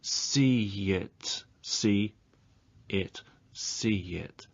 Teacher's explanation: there's a linking y